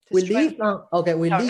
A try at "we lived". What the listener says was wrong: Not leaved. Not we leaved. This is what you're doing. You're doing this thing that makes the E sound. You're going, we leaved. It's remember short I, we lived.